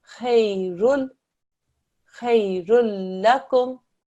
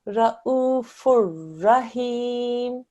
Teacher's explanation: If it's la mushaddad or ra mushaddad, then again, you make no nasal sound. But what you do is you treat the tanveen as if it's a single stroke. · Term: Izgam Kamil